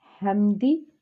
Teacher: ہاں جو ہے وہ حروف حلقی ہے اور حلق کے درمیان سے اس کو ادا کرنا ہے۔ ہاں، میم جو ہے میم جزم کے ساتھ ہے اور اس کے بعد دال ہے، اس کا مطلب ہے یہ اظہار شفوی کا قاعدہ ہے، یہاں پہ ہم نے غنہ نہیں کرنا